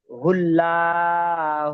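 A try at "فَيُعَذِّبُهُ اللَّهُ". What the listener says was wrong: ফায়ুআযযিবুহুল্লাহ, আপনি এখানে লালা করছেন, এখানে ল হবে।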